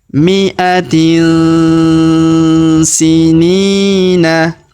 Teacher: tanwin in huruf tin bertemu huruf si ya, sa ataupun si, maka kita dengungkan dan kita samarkan cara bacanya ya.